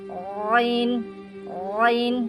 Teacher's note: আইন হলকের মাঝ থেকে হলকের মাঝ থেকে গলা চেপে আদায় হবে